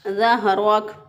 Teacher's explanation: हा को सीने की तरफ जो गले का हिस्सा है वहाँ से हा अदा करेंगे ज़हरक। इसी तरह रा को और कोई पुर नहीं पड़ेगा, मोटा नहीं पड़ेगा तो ये भी गलत हो जाएगा।